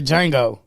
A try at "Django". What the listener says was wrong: It's Django. The D is silent.